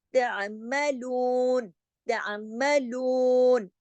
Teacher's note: اس میں لو جو ہے وہ کھینچے گا